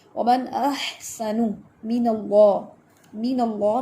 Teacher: ومن احسن من اللہ، من اللہ میں درمیان میں الف جو نظر آ رہا ہے وہ حمزۃ الوصل ہے، اور اللہ اس کا نام جو ہے، اللہ کا نام جو ہے وہ ہیوی پڑھا جائے گا۔ ریزن کیا ہے کہ اس سے پہلے زبر ہے، فتحہ ہے۔